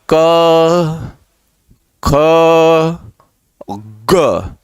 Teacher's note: तो ग वर्ण किस में आ जाएगा? सघोष, क्योंकि स्वर तंत्रियों में ध्वनि का कंपन हुआ।